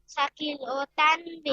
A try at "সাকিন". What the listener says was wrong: আবার বলে সাকিল, নুন সাকিন